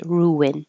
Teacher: there is a w cuz you're rounding your lips for Rue and then unring for in ruin my life why are you